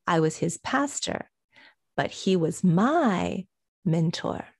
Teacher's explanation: We have to stress that my, because we're contrasting the possessive in this case.